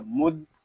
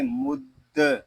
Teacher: یہاں دال مشدد ہے، اس کو ہم جماؤ کے ساتھ ادا کریں گے